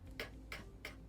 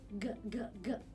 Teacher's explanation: C is voiceless and G is voiced.